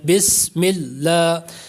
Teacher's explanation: جب بسم اللہ پڑھتے ہیں تو سین ہے اس میں، سیٹی کی آواز پیدا ہوتی ہے، بسم اللہ، اس طرح سے۔